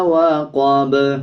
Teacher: جب وقف کریں گے تو با پہ قلقلہ کیا جائے گا اور زبر کو سائلنٹ کر دیں گے